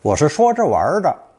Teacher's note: I was just kidding, but he means it. The verb to play, 玩, often takes the retroflex R ending to give it a light and relaxed feeling.